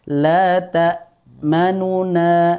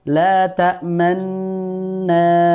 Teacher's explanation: Sehingga kita membacanya bukan la ta'manuna, namun dibaca dengan idgham, la ta'manna. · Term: idgham mutamathilain kabir